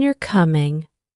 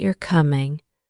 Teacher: the first one has a rising intonation, and the second has a more neutral tone